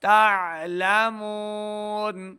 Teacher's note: تعلمون عین کی جگہ پہ حمزہ کی آواز نہیں آنی چاہیے ، حمزہ نہیں ہے، یہ عین کا سائن ہے تو عین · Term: عین کی آواز